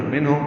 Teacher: منہم نون ساکن پہ اظہار ہے، اظہار حلقی، ہا آنے کی وجہ سے ہا سے الگ سے نکالیں گے، اور میم ساکن پہ اظہار شفوی.